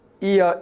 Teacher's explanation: when you bring together the e sound and a sound and pronounce it rapidly, iya, it becomes ya, like the ya in yesterday